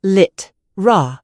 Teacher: In literally, unstressed vowels turn into a schwa, a producing lit, raw. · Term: vowel reduction